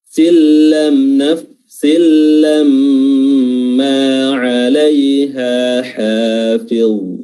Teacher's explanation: huruf mim bertasjid karena durasinya ditahan, dan memang huruf mim sudah mengandung gunnah